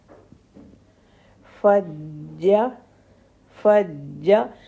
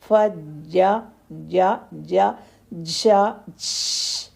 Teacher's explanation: جیم کے اندر چے ساؤنڈ نہ آئے، جیسے فجا جا، ایسا ساؤنڈ نہ آئے۔